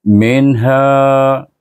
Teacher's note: Ada tanda izhar. Dibaca dengan izhar kan dia bertemu dengan huruf halqiyah, huruf ha di pangkal halqum tu.